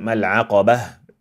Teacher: stop on a silent ha instead of al'aqabat